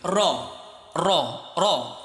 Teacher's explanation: মনে করো উপর থেকে নিচে গড়িয়ে পড়া স্লাইড, এটা র। জিহ্বাটাকে একটু কাঁপিয়ে উচ্চারণ করতে হবে,